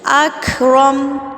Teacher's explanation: کاف کی آواز کو آپ نے روکنا نہیں، ایسی چلتی ہوئی آواز ہونی چاہیے